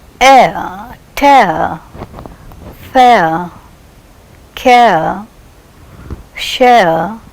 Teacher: How is the glide taking place from one position to another? Yes, the glide takes place from a front half open unrounded vowel to a central unrounded vowel between half close and half open. But if it occurs as a final sound, then again the glide is in the direction of central unrounded vowel just below the half open position.